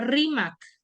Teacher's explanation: donde tiene la mayor fuerza de voz en la penúltima